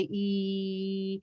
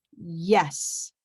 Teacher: A vowel can be continued. It's one sound. You can hold your voice, whereas Y, the Y sound has a very strong push and an ending to it. That is a consonant sound.